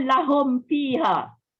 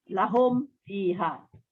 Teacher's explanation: Maknanya tanpa dengung lah. Dia izhar syafawi lah.